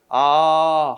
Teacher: 한번 입이 딱 정해지면, 모양이 정해지면 변하지 않죠? 혀도 움직이지 않잖아. 이걸 단모음이라고 그래.